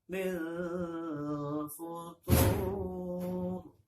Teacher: Jadi futur ke atas ya nadanya.